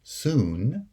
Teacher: If the segment occurs between a S and a N, two segments with lower sonority, like the word soon, well, then the segment is pronounced as the high back vowel.